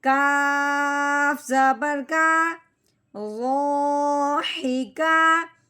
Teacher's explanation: کاف باریک ہے، حلق سے موٹائی والی آواز نہیں نکالنی، کاف باریک کر کے نکالنا ہے